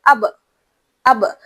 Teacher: آپ نوٹ کریں گے یہاں پر اب اب آپ کو جھٹکے کی آواز ملے گی جس کو ہم قلقلہ کہتے ہیں